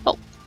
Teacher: British English pronounces it as an open round sound. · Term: O sound